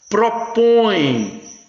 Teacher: Veja o tio nasalizando aí o A. Propõe, olha o tio nasalizando o O.